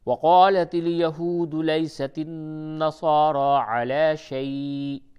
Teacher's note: اور یہ را کو پر کر کے پڑھیں، را کے اوپر کھڑا زبر ہے